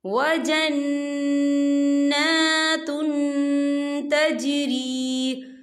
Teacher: دیکھیں وجنات، تا کے پر تنوین ہے، تنوین کے بعد جو ہے تا آ رہا ہے، اور تا جو ہے اکفا کا ورڈ ہے، تو ہم یہاں اکفا کریں گے، تنوین کی آواز کو ناک میں چھپائیں گے